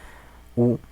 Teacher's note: Perdón, que los labios van un poco hacia afuera. Entonces, U y O en español son vocales redondeadas.